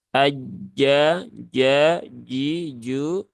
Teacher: sifatnya jahr dan dia yang keluar adalah tempatnya di tengah lidah sini ya Tengah lidah mendekati ke langit-langit atas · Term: Jim